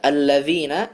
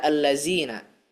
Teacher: melafalkan huruf zal dengan zai